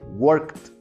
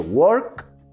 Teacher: la D la vas a tener que hacer más fuerte, no puedes hacerla solo como una D, vas a tener que hacerla como una T, parecido a una T. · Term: una D tronada